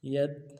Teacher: یا لین ہے بالکل نہیں کھینچیں گے۔ یا تا زبر ید، ید جزم بھی ہے، یا لین بھی ہے، ید۔